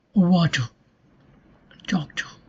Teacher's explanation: you are giving a relative emphasis to the syllable wa than the ter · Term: stress